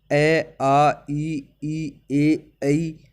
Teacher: इन्हें बोलने पर होठों की आकृति गोल नहीं होती है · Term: अवृत्ताकार